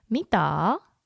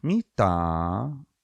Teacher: It dips down. It dips and then it goes up again.